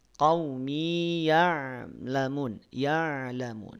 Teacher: jangan seolah terdengar diidghamkan dengan ya berikutnya.